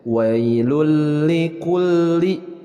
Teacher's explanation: idgham bilagunnah yaitu idgham yang tidak disertai dengan ghunnah jadi cara membacanya adalah jangan ditahan jangan disertai gundah kalau disertai